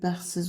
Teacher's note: Bəxtsiz sözündə T düşür, bəxtsiz olur.